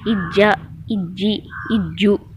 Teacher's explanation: ஜீம்ன்றதால கண்டிப்பாக கல்கலா பண்ணி தான் ஓதணும்